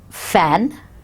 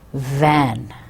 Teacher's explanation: The vocal cords are either far apart and do not vibrate, as in fan, or they are relatively closed and vibrate, as in van. So we either keep the airflow is very clear and we say fan, very easy, or we have to pronounce it by and relatively is closed and we are vibrating the airflow, outgoing airflow, as in van. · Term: voiceless and voiced sounds